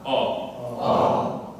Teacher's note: very open sound, almost ah, but round your lips enough that it sounds like an O. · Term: open O